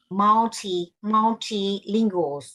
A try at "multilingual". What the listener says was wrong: you have to say you have to pronounce that G